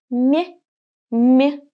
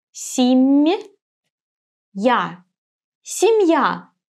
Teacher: Soft sign shows me that the sound M is soft. So I raise my tongue closer to the hard palate when I pronounce this M.